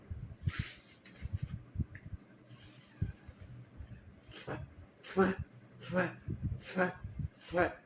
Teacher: दोनों होठों को बंद करके बाहर हवा निकालना